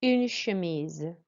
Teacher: they don't have a ch sound, they have a sh sound